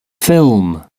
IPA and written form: fɪlm (film)